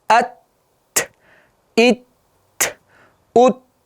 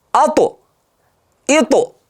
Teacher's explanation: Endi sukunli bo'lganda ta'da havo bor.